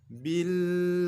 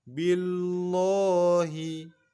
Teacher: huruf lamnya kita baca tipis sebab sebelum lafaz Allah berharokat kasrah baris bawah